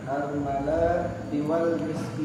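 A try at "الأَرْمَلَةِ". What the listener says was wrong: Armalati, jangan dipanjang.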